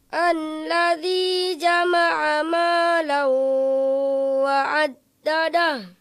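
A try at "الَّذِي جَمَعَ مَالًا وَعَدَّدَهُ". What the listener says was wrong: Ya, jangan menghentak gitu. Ulangi.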